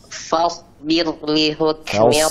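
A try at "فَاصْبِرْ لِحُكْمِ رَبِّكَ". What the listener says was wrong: Falsbir, kasrahnya jelaskan. Falsbir, bir.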